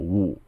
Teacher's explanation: It's pronounced with a third tone, and it's actually U. Right? It's just like you're saying ooh.